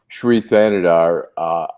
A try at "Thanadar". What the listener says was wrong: Thanadar. The H is silent. Thanadar. The H is silent.